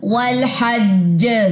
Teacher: तशदीद है तो कलकला स्ट्रॉन्ग होगा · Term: कलकला अकबर